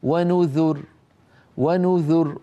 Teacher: فيرققون الراء مع أنها ساكنة مسبوقة بضمة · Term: ترقيق الراء